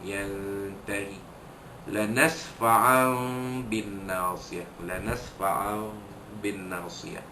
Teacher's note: membalikkan tanwin yang bertemu dengan huruf ba ini, membalikkan bunyinya kepada bunyi seakan-akan bunyi mim. Iqlab, dan dengung, dan nasfa'an bin nasiyah. · Nun mati bertemu huruf ta, letaklah satu huruf ikhfa haqiqi. Jika disembunyikan bunyi nun mati bertemu dengan huruf ta ini dengan dengung